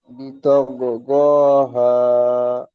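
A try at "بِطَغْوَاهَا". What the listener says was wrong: বিতগ ও, গ নয়, বিতগ ওয়াহা। জি, বিতগ গ বললে ভুল হবে, বিতগ ও, ও, বিতগ ওয়াহা।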